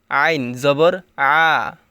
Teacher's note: আইন জবর আ, এটাও হলকের মধ্যখান হইতে উচ্চারণ করতে হবে। আইন জবর আ, মানে গলার এখানে একটু চাপ দিতে হবে।